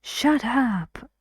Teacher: this is a phrasal verb and naturally it's stressed on the second part these two words are separate one syllable one syllable done stressed